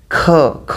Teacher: ख एनर्जी ज्यादा लग रही है हवा ज्यादा निकल रही है